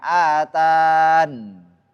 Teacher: Jadi mat tabi'i atau ya-nya hilang dan disukunkan nunnya